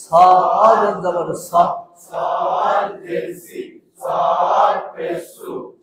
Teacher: সামনের নিচের দাঁতের আগা থেকে শীষ সহ মোটাভাবে আদায় হবে